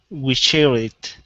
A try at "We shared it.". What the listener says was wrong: Okay, so you're missing this D here. You're saying we share it. So we need the D. I want you to say dit. We shared it.